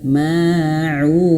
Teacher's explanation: Kemudian ma panjang dua harakat karena ada alif